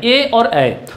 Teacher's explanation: यानी ए और ऐ का जो उच्चारण स्थान होगा वो क्या होगा? कंठ और तालु होगा।